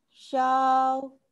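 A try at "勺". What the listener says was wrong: Enggak, jangan ayun. Shao. Dari shao naikin. Jangan jangan jadi jangan diayun gitu.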